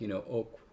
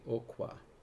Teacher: It could just be an added ah on the end, epenthesized. And so instead of like, ok, it would be okwa.